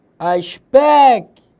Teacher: É uma paroxítona, penúltima sílaba tônica, terminada em O.